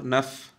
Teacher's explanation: উপরে দাঁত, দাঁতের মাথা, দুই দাঁতের মাথা ঠোঁটের পেটে লাগবে।